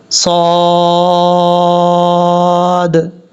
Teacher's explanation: اب کیونکہ لاسٹ حرف جو ہے وہ صاد ہے، جب ہم یہاں پہ سٹاپ کریں گے تو صاد میں آخر میں دال آتا ہے جو ساکن ہو رہا ہے، تو یہاں باؤنس آئے گا دال میں، قلقلہ کریں گے صاد، اس طریقے سے۔